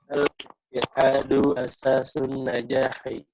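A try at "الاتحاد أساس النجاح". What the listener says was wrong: Naam,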